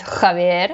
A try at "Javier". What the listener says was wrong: There you go. It's a ch, it's not a h.